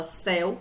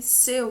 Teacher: Porque é aberto. Porque você fala com a boca mais aberta. Você fala céu, que é diferente de seu, que tem um timbre fechado. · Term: ditongo aberto